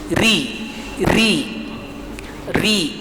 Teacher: ketika ron-nya berbaris bawah, ah maka ro itu dibaca tipis.